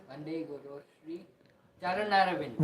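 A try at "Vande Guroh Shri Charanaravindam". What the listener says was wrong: Vande Guroh. Not so. Most of us sometimes mispronounce. We say Vande Guru Shri Charanaravindam. Guroh means plural.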